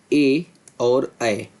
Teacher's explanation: कंठ प्लस तालु, इनसे बोला जाएगा ए और ऐ। · छठा जो उच्चारण स्थान है वह है कंठ प्लस तालू